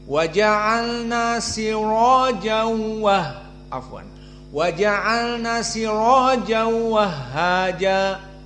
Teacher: Adapun qiraah hamzah az-zayyat maka dibaca dengan tafkhim ra dan idgham bila gunnah.